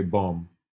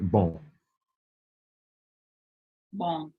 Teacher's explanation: It's almost like an N sound, but you don't actually pronounce the N.